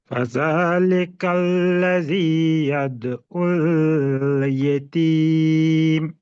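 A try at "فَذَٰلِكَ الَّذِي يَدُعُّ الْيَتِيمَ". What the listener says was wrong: یادو ال نہیں ہے، یادو ال، یادو ال غلط معنی ہو جائے گا۔ دال کو نرم پڑھیے نا، زبان کی نوک کو آگے لائیے اوپر کے، یہ خود بخود نرم ہو جائے گا۔ دال کو ادا نہیں کر رہے صحیح آپ۔ ہاں،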